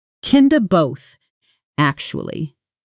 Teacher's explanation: And there's often a small, rising, then falling intonation pattern. Rising slightly on kinda, then falling on actually, which signals uncertainty mixed with honesty.